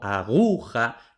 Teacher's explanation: Y lo mismo con aguja, la sílaba tónica es gu, por tanto, tampoco aplicamos la regla, decimos la aguja.